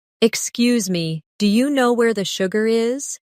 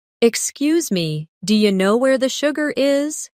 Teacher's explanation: Notice how do you changes to dia.